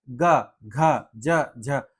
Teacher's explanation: जिनके उच्चारण में स्वर तंत्रियों में कंपन होता है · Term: घोष वर्ण